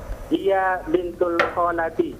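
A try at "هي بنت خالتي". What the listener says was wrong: Bintul atau bintu?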